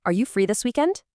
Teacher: Really try to match that natural rising intonation at the end of the question.